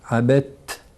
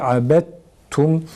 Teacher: İdgam kalkaleden daha güçlüdür. Ma abedetum kelimesinde dalı önce ta'ya çeviriyoruz. Abet, dal abed değil abet şeklinde okunacak şekilde.